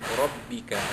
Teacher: ra, balik atas dibaca tafkhim